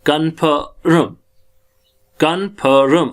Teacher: र हमारा जो है र साउंड हमारी र की जो है वो साइलेंट रहती है